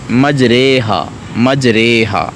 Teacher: الف کو یا کی طرف مائل کر کے پڑھنا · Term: امالہ